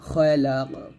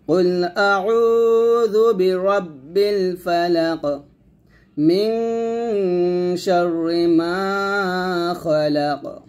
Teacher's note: এখানে খালাক বলবেন না খলাক কফটা কলকা করতে হবে